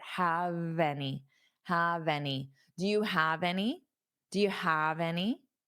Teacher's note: So hold on that v sound on have and take it to your next word.